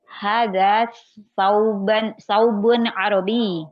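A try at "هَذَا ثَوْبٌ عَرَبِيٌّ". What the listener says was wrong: Sahih, hada saubun arabi.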